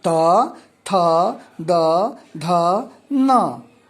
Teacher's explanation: इसका उच्चारण हम दांत से होता है। जैसे जिह्वा दांत को स्पर्श करती है